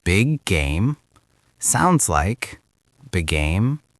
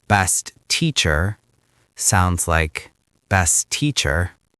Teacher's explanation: When the first word ends and the next word begins with the same consonant, Americans merge it.